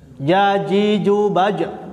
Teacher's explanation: nafas ditahan ketika pengucapan huruf Jim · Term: Jejer